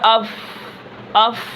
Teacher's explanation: آواز پست ہے، اس کی آواز بلند نہیں ہے، آواز پست ہے لیکن سانس جاری رہے گا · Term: ہمس